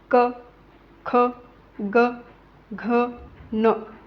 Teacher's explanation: हे वर्ण कंठातून उच्चारले जात आहेत